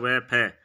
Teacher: गया दंतोष् दंतोष् वर्ण सूत्र वकार से दंतोष्ठम वकार से दंतोष्ठम यानी व का उच्चारण स्थान है दंतोष्ठ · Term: दंतोष्ठ वर्ण